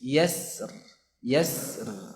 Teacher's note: khusus untuk kata yasr, yasr ini bisa juga dibaca dengan tipis. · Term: tarqiq